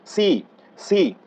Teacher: আমরা যখন সি বলবো একটু মুখ দিয়ে শীষ বের হয়ে যাবে